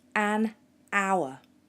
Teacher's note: the word hour doesn't actually start with a vowel, but it has a vowel sound because we don't pronounce the H